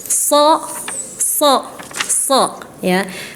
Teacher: ujung lidah menempel di gigi seri bawah tetapi dia mempunyai sifat isti'la, maka pangkal lidahnya harus naik. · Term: huruf shad